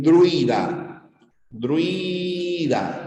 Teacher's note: la primera consonante es la oclusiva. Y luego de la oclusiva aparece la L o la R. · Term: cabeza compuesta